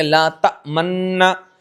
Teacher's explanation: अब लात तमन्ना मुशद्द पढ़ा जाए तो नून में इस्माम यानी कि हरकत जाहिर नहीं होगी बल्कि होठों से पेश की तरफ इशारा किया जाए